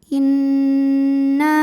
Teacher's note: Nun tasydidnya dihukumi ghunnah musyaddadah. Atau wajib ghunnah. Karena nun bertasydid. Cara bacanya didengungkan.